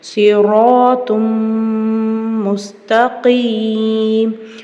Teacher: தன்வீன்க்கு அப்புறம் மீம் இருக்கு இங்க இத்ஹாமுடைய சட்டம் வருது குன்னா செஞ்சு ஓதணும்